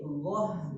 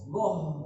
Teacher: ghah bukan goh, haknya ikut tebal